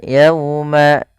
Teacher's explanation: Pada bacaan yauma lembutkan dalam lafal yauma karena di sini ada bacaan lin.